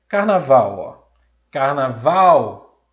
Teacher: Carnaval, Carnaval, separei aqui as 3 últimas sílabas, no caso, essa é uma palavra trissílaba, e descobri que a última sílaba que é a sílaba tônica. Carnaval, sendo assim, essa palavra é oxítona.